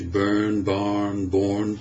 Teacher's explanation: in American English of course the r is sounded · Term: Rhotic vowels